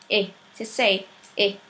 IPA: ɪ